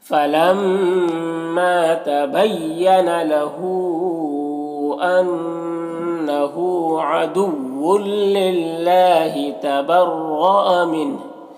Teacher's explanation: نون ساکن کے بعد ہا ہے حروف حلقی میں سے تو نون میں اظہار حقیقی ہوگا